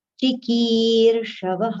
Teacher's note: Key we have to prolong and at the end the visarga sound aha